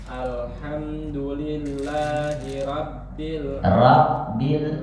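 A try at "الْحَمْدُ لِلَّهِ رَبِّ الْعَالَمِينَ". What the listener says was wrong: masih tipis itu R R R bukan rabbil rabbil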